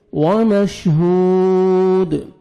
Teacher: वाव मद है, हा को आपने 1 सेकंड खींचना है और दाल कलकला करेंगे जब स्टॉप करेंगे।